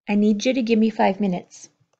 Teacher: give me pulling together to become gimme